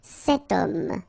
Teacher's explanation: But then O is here, we've got this H letter. Remember, H is not pronounced, okay? So you get the sound of O at the beginning of this word